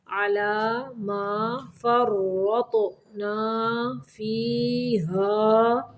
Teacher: را کو موٹا پڑھنا ہے، طا کو بھی موٹا پڑھنا ہے ساکن کرتے ہوئے